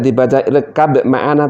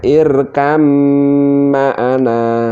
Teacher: Antara ba dan mim itu makhrajnya berdekatan, maka harus dimasukkan, diidghamkan. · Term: idgham mutaqorribain